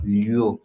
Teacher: Then we have the lyu, which is the palatal labial form of the l sound